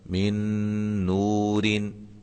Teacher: تو یہاں نون ساکن کے بعد نون ہے، لہذا یہاں بھی ادغام مع الغنہ ہوگا